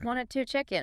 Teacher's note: the source highlights that reduction of to a schwa sound